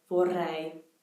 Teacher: you'll hear the double R, or the alveolar trill, in words like vorrei